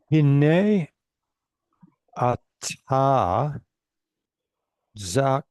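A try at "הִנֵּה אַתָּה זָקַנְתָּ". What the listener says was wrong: Zakanta. Very good.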